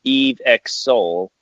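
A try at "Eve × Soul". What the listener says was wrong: I think that's Eve Crosso. I think you pronounce the X as a cross.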